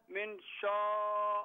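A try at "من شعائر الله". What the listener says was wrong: नहीं शा शा नहीं है शाआ शाइरिल्लाह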